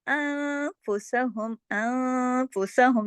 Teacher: یہ اس کے اندر اخفا ہو رہا ہے، نون ساکن کے بعد فا آ رہا ہے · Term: اخفا حقیقی